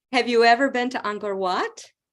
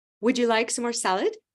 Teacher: to illustrate the rising intonation at the end of yes/no questions